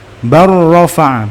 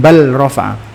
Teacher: lamnya masuk ke ro secara sempurna sehingga benar-benar enggak terdengar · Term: idgham mutaqoribain